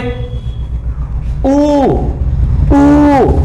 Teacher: तो इन दोनों को बोलने में भी होट गोल हो गए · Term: वृताकार स्वर